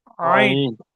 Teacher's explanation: আইনটাও কণ্ঠনালীর মাঝখান হতে, অর্থাৎ গলার ভিতর থেকে বলবেন আইন।